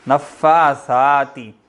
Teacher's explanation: زبان کو باہر نکال کر اگلے دونوں دانتوں کی ٹپ پر لگانا ہے ورنہ سین بن جائے گا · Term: سا